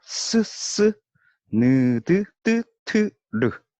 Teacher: 전부 치조음이라고 합니다. 치조음, 잇몸이란 뜻인데 잇몸 소리.